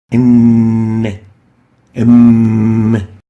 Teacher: is articulated by closing the two lips together in that's why we call it by labial and let's watch